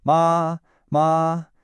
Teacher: First tone is high and flat like you're holding a note.